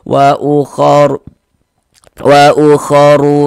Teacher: Maka huruf ro dibaca tebal dibaca tafkhim. Sehingganya bangkal lisan kita naik terangkat ke atas ketika kita mengucapkannya.